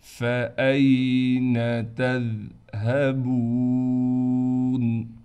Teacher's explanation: واو حروف مدہ ہے، اس لیے با کو ایک الف کی مقدار کھینچیں گے